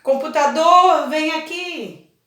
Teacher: Então a sílaba tônica é o do.